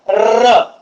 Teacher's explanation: र चा उच्चार र, र चा जेव्हा तुम्ही उच्चार करता त्यावेळेस त्याचा उच्चार करत असता वेळेस कंपन होते, म्हणून त्याला कंपित वर्ण असं सुद्धा देखील म्हटले जाते. · र चा जेव्हा तुम्ही उच्चार करतो र म्हणजे थोडस व्हायब्रेट होते, म्हणजे थोडस कंपन होते. र चा जर उच्चार तुम्ही कंटिन्युअसली जर केला तर याचं कंपन होते, म्हणून याला कंपित वर्ण असं म्हणतात.